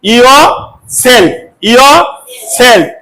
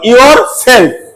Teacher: দেখো এখানে লিখে দিছি ইও, ইও সেলফ, ইও সেলফ, এটা হলো ব্রিটিশ উচ্চারণ। যখন র দেবো এখানে, বলো ইওর সেলফ, তখন হলো আমেরিকার উচ্চারণ